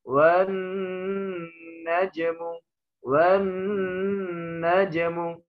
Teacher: wan najmu harus ditahan dikit, ya, minimal 2 harokat karena guna